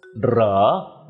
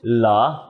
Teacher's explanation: it’s NEVER pronounced เหรอ but ALWAYS เหลอ with the ล sound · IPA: [lə̌ə]